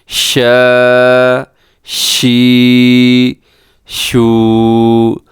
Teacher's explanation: شین میں صفت تفشی پائی جاتی ہے، یعنی اس میں آواز پھیل جاتی ہے۔